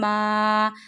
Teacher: We stretch alif up to one alif. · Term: alif madda